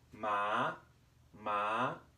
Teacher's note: Our second tone starts mid-range and goes up.